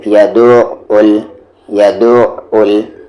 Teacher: یا پر زبر یا، دو کو عین ملائیں گے دو، یدع، پھر او کو یہاں لام ملائیں گے عل، یدعل۔ دھیان سے عین کو صحیح بولیں، یہاں پر یدعل نہیں بولیں گے آپ، آواز کو آپ بیچ والے حلق میں لے جائیں گے